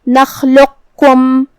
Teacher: پھر یہاں حرف القاف ہے اور اس پہ جزم ہے، اور اس کے بعد حرف الکاف ہے، تو جو کہ یہاں حکم ہوا ادغام متقاربین، تو ہم قاف کو کاف میں ملا کے صرف حرف الکاف کو پڑھیں گے تشدید کے ساتھ